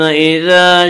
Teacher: ثم اذا الف مدہ، الف میں شا مدہ ہوتا ہے، الف سے پہلے ہمیشہ زبر ہوتا ہے، الف مدہ کو ایک الف کے برابر کھینچ کر پڑھیں گے